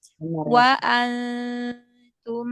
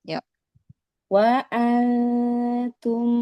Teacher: Jangan nempel ujung lidahnya ke makhraj huruf nun. Jangan nempel di makhraj huruf nun karena ikhfa artinya samar ya.